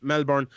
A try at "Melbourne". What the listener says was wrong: Take away the R and you've nailed it. It's like Melbourne. It's like MELBEN or BUN. Melbourne.